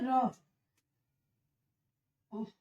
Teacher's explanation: इसमें जो जीभ होती है वो मुंह के मध्य में आ जाएगी और बारबार ये झटके के साथ आगे पीछे होती रहेगी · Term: लुंठित